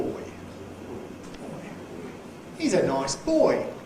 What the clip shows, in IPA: ʧoɪs